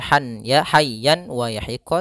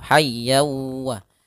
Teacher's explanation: tanwin an bertemu huruf wau tanwinnya masuk kepada huruf wau sehingga bukan lagi dibaca Han ya hayyan waah tapi masuk hayyawa